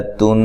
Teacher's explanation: تن، نون مشدد پہ غنہ ضروری ہے، تا کو دونوں تا جو ہیں یہ باریک ہیں، ان کو موٹا نہیں پڑھنا